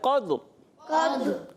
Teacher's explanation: دال میں کلکلا ہوگا را پر ہو جائے